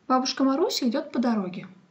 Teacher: pronounced as two intonational phrases and four clitic groups. The last clitic group is made up of a preposition and a noun.